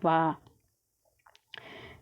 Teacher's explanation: हमारा वा है जो दात से और हमारा ओट से बोला जाता है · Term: दंत ओष्ठ व्यंजन